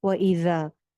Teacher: ذال میں سیٹی نہیں آنی ہے، اوپر والے دو دانتوں کے کنارے پہ زبان لگنی ہے